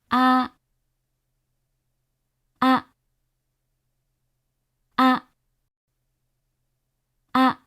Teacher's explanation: This is another one that's in between American English vowels. According to Okada, A is a central low vowel. Vance describes the vowel in a similar way, noting that the tongue position is slightly more forward than the vowel found in father.